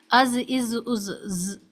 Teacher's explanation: ذال کو ادا کرنے کے لیے ضروری ہے کہ ٹپ آف ٹنگ اوپر کے سامنے کے دو دانتوں کو، جن کو ہم ثنایا علیہ کہتے ہیں، کے کناروں سے لگنی چاہیے، از، از، از، اور یہ باریک حرف ادا ہونا چاہیے۔ اس میں کوئی بھی آواز ہوا کی یا سیٹی کی سنائی نہیں دینی چاہیے۔ از، از، از، ساؤنڈ آف بز، سیٹی کی آواز سے مراد بز ساؤنڈ بالکل بھی نہیں آنی چاہیے۔